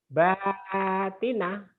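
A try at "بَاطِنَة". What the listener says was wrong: Jangan batina. Jangan T ya Pak ya. to. THO. Batina. Batina. Baltina, pokoknya dimonyongkan.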